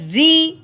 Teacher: رو کے نیچے زیر ہے، اس کو باریک کریں گے